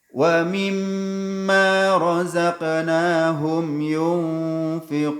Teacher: Jangan terburu-buru dalam membaca mim tasydid ini. Harus gunnah, wajib gunnah.